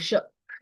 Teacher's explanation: ನಿಮ್ಮ ನಾಲಿಗೆ ಹೋಗಿ ಮಧ್ಯದಲ್ಲಿ ತಾಕೊಳ್ಳುತ್ತೆ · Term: ಮೂರ್ಧನ್ಯ ಷ